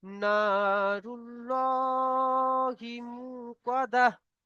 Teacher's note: আল্লাহর লামকে পুর করে পড়তে হবে, কারণ আল্লাহ শব্দের আগে, আল্লাহর লাম মুশাদ্দাতের আগে পেশ এসছে, ডান দিকে পেশ এসছে, তাই পুর করে পড়তে হবে।